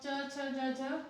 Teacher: ठीक है, च वर्ग तालु से। जब आप च, छ, ज, झ बोलेंगे ना तो आपको लगेगा कि हाँ तालु से, मतलब तालु का स्पर्श हो रहा है